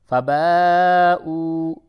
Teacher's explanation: فباؤ، یہ مد ہے، مد متصل، اسے تھوڑا کھینچتے ہیں، اور یہ واو مدہ ہے، اسے بھی تھوڑا کھینچ کے پڑھیں گے